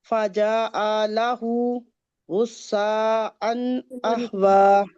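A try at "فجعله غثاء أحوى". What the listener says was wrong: لمبا نہیں کریں، فجعلہ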